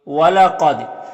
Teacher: قاف یہ حروف مستعلیہ میں سے ہے تو اسے پر پڑھیں گے۔ دال حروف قلقلہ میں سے ہے اور دال کے اوپر جزم ہے تو دال میں قلقلہ ہوگا، یعنی دال کو ادا کرتے وقت اس کی آواز اپنے مخرج سے ٹکر کھا کر الگ ہو جائے گی۔